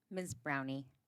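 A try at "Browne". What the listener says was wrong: The E is silent.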